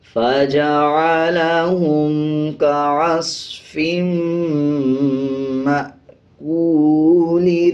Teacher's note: کاف کے اوپر پیش ہے اور واو کے اوپر جزم ہے، تو یہ حروف مدہ بن جاتا ہے، اس کو 1 سیکنڈ لمبا کر کے پڑھا جائے گا